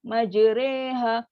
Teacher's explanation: Dia akan bunyi macam di antara majraha dengan majriha. Nak kata ra pun bukan, nak kata ri pun bukan. So di antara.